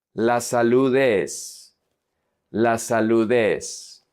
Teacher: The D from salud is going to connect to the E.